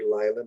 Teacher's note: notice the accents on the first syllable here